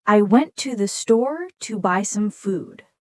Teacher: The rhythm is dum-da-da-dum, dum-da-da-dum, dum-da-da-dum. I stressed the important words. Went, store, buy, food. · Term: sentence stress